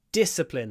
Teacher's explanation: Disciplina, discipline. Stress is on the di at the beginning, so we do this discipline, where we don't release the d immediately.